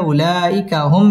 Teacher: মিম সাকিন ইজহারে খাস গুন্না ছাড়া পড়তে হবে